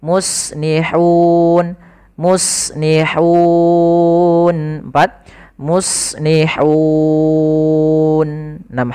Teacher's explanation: Maka panjang untuk hu sendiri, sebelum matikan nunnya kita boleh memanjangkan 2 harokat, boleh 4 harokat, boleh pula 6 harokat. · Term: mad arid disukun